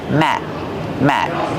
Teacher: stop the air. We don't release the sound.